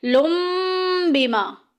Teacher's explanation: لن کے آخر میں جو نون کی آواز ہے ہم اس کو میم سے بدل دیں گے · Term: اقلاب